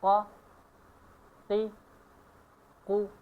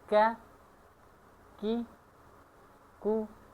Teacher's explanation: قاف کا مخرج زیادہ اندر ہے اور کاف کا مخرج تھوڑا آگے ہے۔ تیسرا نمبر قاف میں آواز مضبوط ہوتا ہے اور کاف میں آواز نرم ہوتا ہے